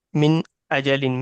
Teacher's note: جیسے من اجلن میں غنہ نہیں ہوگا، کیونکہ حروف حلقی میں سے الف آ رہا ہے، حمزہ آ رہا ہے. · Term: اظہار